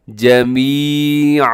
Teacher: دو زبر کو الف مدہ کی طرح کھینچ کر وقف کرتے ہیں